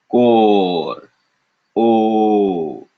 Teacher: it's very flat very stable